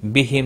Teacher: میم ساکن کے بعد واو آیا ہے، اظہار شفی ہوگا